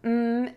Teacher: Put your lips together for that m air moves out of your nose